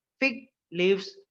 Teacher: ఫిగ్ లీవ్స్ లో ఫిగ్ మీద stress ఉంటది కానీ లీవ్స్ మీద ఉండదు